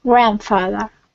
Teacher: we're going to stress the beginning of the word